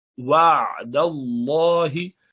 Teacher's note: लफ्ज़ अल्लाह के लाम को दाल से मिला लें, दाल पर जबर है, जबर और पेश होता है तो इसको भारी पढ़ते हैं।